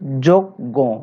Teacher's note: দেখো জর সাথে যে অ আছে সেটি ও হয়ে গেছে নিয়মের কারণে। কোন নিয়ম? অ এর পরে জ ইয় থাকার কারণে অটা ও তে রূপান্তরিত হয়েছে।